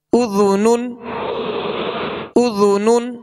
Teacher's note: ذال کو نرمے کے ساتھ ادا کریں گے، اس میں سیٹی کی آواز پیدا نہ ہو